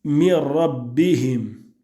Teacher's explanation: Tu remarques qu'il n'y a aucune nasalisation, que le nun a été introduit dans le ra et que tu prononces Mir rabbihim.